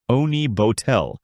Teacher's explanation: In France, the word honey bottle is pronounced oni bottel with a soft h and smooth rounded vowels. Oni bottel, giving it a gentle flowing sound.